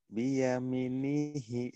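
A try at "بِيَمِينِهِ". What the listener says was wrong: Biyaminihi. Biasa aja, jangan ditekan.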